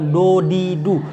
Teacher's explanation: Itu kalian tinggal pelajarin aja baca tiap hari di depan cermin do du bukan do di du. Kalau do di du berarti ujung lidah kalian tuh ketemu sama gigi seri atas ya